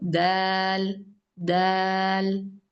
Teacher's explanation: ദാൽ, light letter. ദാൽ എന്ന് പറയുമ്പോൾ നാവിന്റെ തുമ്പ് മേലെയുള്ള അണ്ണാക്കിൽ തന്നെയാണ് ടച്ച് ചെയ്യുന്നത്.